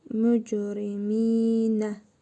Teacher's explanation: Mim hərfində hərfi məd var. Bir əlif miqdarı uzadırıq.